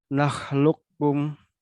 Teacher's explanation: Jadi tidak perlu kita baca kol-kolah di kofnya. Nah, lukum langsung masuk ke huruf kaf. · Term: Kof sukun bertemu dengan kaf